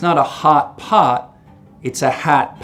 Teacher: And so what happens is that the lot vowel which you know normally lives back here. your tongue cupping low down in the back for an open a sound moves forwards towards where trap used to be. So in Chicago it's not a hot pot, it's a hat.